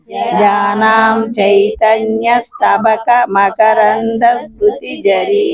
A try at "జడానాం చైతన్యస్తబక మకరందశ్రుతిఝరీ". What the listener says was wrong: Very good.